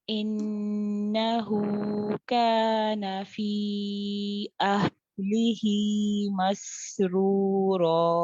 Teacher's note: ہا اور سین دونوں میں رخاوہ کریں گے دونوں کو بالکل برابر ٹائم دیں